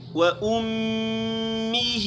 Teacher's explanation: میم مشدد میں غنہ کرنا ہے